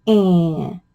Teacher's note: So what happens when A gets a little nasally? It sounds a little whiny, and it's Ann.